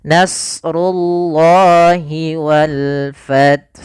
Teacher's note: lafal Allahnya kita panjangkan 2 harokat